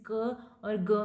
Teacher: Back of the tongue soft palate के साथ पहले हवा को ब्लॉक करता है, फिर एक बर्स्ट के साथ इसको रिलीज किया जाता है। तो इस तरह से जो साउंड प्रोड्यूस होती हैं, दीज आर कॉल्ड स्टॉप या प्लॉजिव साउंड्स।